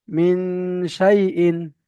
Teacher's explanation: এক আলিফ পরিমাণ নাকে তুলে এক আলিফ পরিমাণ টান দিয়ে পড়তে হয়। গুণনা করে, গুণনা করে।